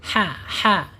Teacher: Ha ini ada di tengah-tengah tenggorokan ya. Ada tengah keluarnya ya.